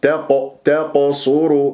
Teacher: القاف مفخمه مرتبه رابعه ومقلقله الصغرى لانها ساكنه